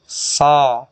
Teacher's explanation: makhraj huruf so adalah ujung lidah menghadap dan mendekat di antara gigi seri atas dan bawah